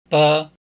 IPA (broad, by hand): b